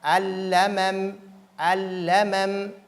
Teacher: Donc la première lam est introduite dans la seconde.